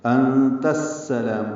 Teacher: حمزہ کی آواز کو واضح طور پر ادا کرنا ہے، انت، اور تا کو السلام کی سین سے ملا دینا ہے. یہاں پہ الف لام نہیں پڑھا جائے گا، ادغام شمسی ہوگا. انت السلام، سین حروف شمسی میں سے ہے اس لیے مشدد.